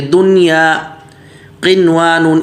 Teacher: نون ساکن کے بعد واو تو آ رہا ہے لیکن ایک ہی کلمے میں ہونے کی وجہ سے یہاں پر ادغام نہیں کریں گے، اظہار کریں گے